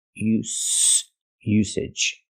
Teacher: We have to use the S sound. S, no voice.